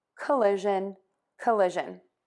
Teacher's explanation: round your lips for that sound and your voice box is on